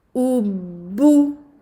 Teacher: Il ne faut pas garder les lèvres en avant pour toute la case. Il faut avancer les lèvres, revenir avec les lèvres à la normale, réavancer les lèvres pour la deuxième dhamma.